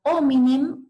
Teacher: la pérdida o apócope de la M final